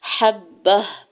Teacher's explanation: جب ہم وقف کریں گے تو گول تا کو ہا میں بدل دیں گے